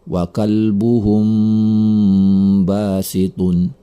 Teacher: Ada mim mati bertemu dengan huruf ba. Maka ini adalah ikhfa syafawi. Maka cara membacanya adalah dengan mendengungkannya selama 2 harokat.